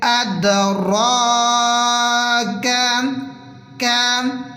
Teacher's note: وما ادراک، را کو پر پڑھیں گے، موٹا کریں گے، تھوڑا سا کھینچ کے پڑھیں گے کھڑی حرکات کی وجہ سے. کاف کو باریک پڑھیں گے، موٹا نہیں کریں گے